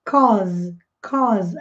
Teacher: A U com som de O.